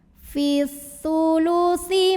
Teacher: Kemudian ada alif lam syamsiyah, karena alif lam menghadapi huruf syamsiyah yaitu sa. Maka alif lamnya tidak perlu dibaca, dilewat aja ya.